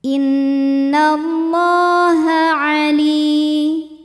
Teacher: Li mad tabi'i zahiri karena ada ya sukun didahului kasrah, maka lam panjang 2 harokat.